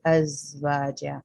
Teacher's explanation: चूंकि इसमें आवाज है लिहाजा वाइब्रेशन होती है, बजिंग साउंड होती है, जैसे बी की होती है अज़वाजा।